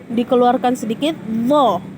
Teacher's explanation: Zo ini dia juga sedikit bulat, namun sama seperti dal di atas. Ujung lidah kita di tengah-tengah dikeluarkan sedikit, zo, namun dia sedikit bulat pembacaannya